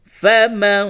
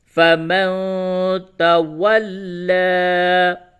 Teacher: فا زبر فا، میم نون زبر من، فمن، نون ساکن کے بعد تا ہے، اس جگہ پہ اخفا ہو رہا ہے. فمن، تا زبر تا، واو لام زبر ول، لام کھڑا زبر لا، تولا، فمن تولا.